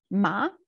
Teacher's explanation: tone goes up, indicator goes up, and our voice as well